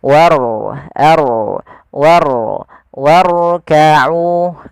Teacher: Warkau itu rnya tipis tapi diangkat ujung lidahnya untuk menebalkannya · Pada lafal warkau di sini ada huruf ro yang ditandai dengan warna biru tebal melainkan huruf rnya dibaca dengan ro tafkhim yaitu ro yang tebal · huruf ro-nya dibaca dengan ro tafkhim, yaitu ro yang tebal